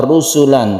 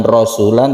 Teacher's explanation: Rusulan ini pendek, bukan rasulan tapi ru. Dhammah ya roknya ini.